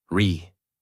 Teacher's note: Natural American tone. Really. Voice rises and falls.